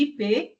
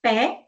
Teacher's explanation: IP, o som, ele vai ser produzido e a nossa língua fica média alta. Quando é pé, ela fica média baixa.